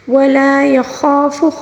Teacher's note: لام کے ساتھ ملا کر پڑھنا ہوگا خالی الف کو، ٹھیک ہے، کیونکہ یہ الف مدہ ہے. ولا یخاف، خا کو پر پڑھیں گے، خا کے ساتھ پھر خالی الف ہے یعنی الف مدہ ہے، اس کو پھر ہم خا کے ساتھ ملا کے پڑھیں گے